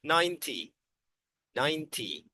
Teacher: So, the T is short and there is no N sound.